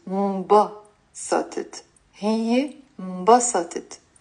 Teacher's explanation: Notice here, my stress is on the first syllable.